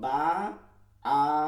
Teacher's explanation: আলিফের মাখরাজ হচ্ছে মুখের ফাঁকা স্থান। · আ শব্দটা হচ্ছে মুখের ফাঁকা জায়গা থেকে হইছে